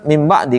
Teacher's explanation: Jadi ada nun mati dengan tanwin ketemu dengan huruf bibir namanya ba. Nah, cara bacanya em dan m-nya itu ditahan em gitu. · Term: iqlab